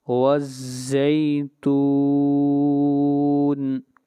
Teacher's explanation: یہاں پر مد عارض وقفی ہوگی، اس مد کو 3 الف کے برابر کھینچ کر پڑھتے ہیں